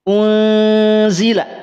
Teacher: di lafadz unzila juga perhatikan ikhfa yang terjadi adalah ikhfa yang tipis. Rahangnya rahang tipis.